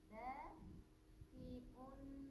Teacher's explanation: Kita baca dengan bacaan mat panjang dua harakat. Jadi kena panjang baqi'un.